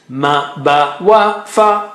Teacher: Ma, ba, wa, fa are from the lips.